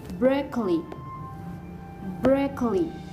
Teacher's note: And the stress is located on the first syllable.